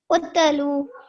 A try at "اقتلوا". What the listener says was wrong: We don't want to make a jerk on the ta. Utlu.